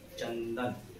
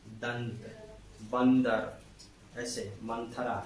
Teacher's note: चंदन आप ऐसा बोलिएगा तो आपको लगेगा कि नाक से हवा निकल रही है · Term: अनुस्वार